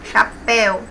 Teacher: Oxítono, na última sílaba é a mais forte. Temos o ditongo aberto, então acentua aí o E.